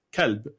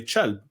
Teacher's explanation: we will take it and replace the kaf with the ch, but not universally. Some words will still say the kaf, and other words it'll be the ch. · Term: the ch sound